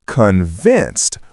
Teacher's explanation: It's convinced with the stress on the second syllable.